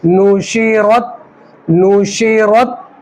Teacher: را کے اوپر زبر ہے تو را کو موٹا کریں گے